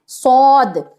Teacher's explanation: سیٹی کی جیسی آواز تو رہے گی ہی، لیکن آواز کو آپ کو بھاری کر لینا ہے، موٹا کر لینا ہے، جس کو کہ پر کرنا کہتے ہیں